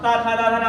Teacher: हर बार जीवा किसको स्पर्श कर रही है? दांत को स्पर्श कर रही है। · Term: दंत व्यंजन